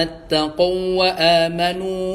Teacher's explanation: Nah ini hati-hati ya ketika ini kan ada waw pertama, ada waw kedua nih ya. Jadi idgham mutamatsilain ya. Tapi jangan digunahin ya, jangan didengungin.